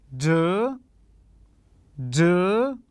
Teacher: كان مستوى الصوت فيه صعود إلى الأعلى فتكون النغمة الثانية